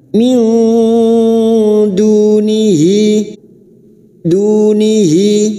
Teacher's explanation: Nun sukun bertemu dal ikhfa hakiki. Kita samarkan bunyi nun sukun dan mendengung selama 3 harokat.